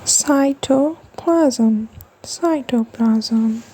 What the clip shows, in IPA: ˈsaɪ.tə.plæz.əm